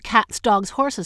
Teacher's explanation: cats ends with a voiceless fricative S, dogs ends with a voiced fricative Z, and horses with a whole syllable Z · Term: cats, dogs, horses phenomenon